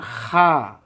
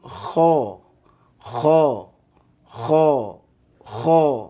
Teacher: ada ihtizaz Ada gesekan ya jadi pangkal lidahnya itu naik kan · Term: huruf tebal